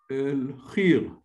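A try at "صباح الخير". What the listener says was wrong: Not exactly, not khir, but because over the kha there is a vowel. Khar. Ah, and then the ya has got the sukun, like a mute. No, but you have a ya here.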